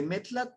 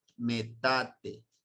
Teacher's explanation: como no lo pueden pronunciar el TL lo que deciden es convertirlo en té